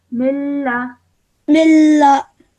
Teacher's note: So over here, like I said, that we have to apply the rule of idgham kamil over here by straight away joining the meme to the lam and not producing a nasal sound in between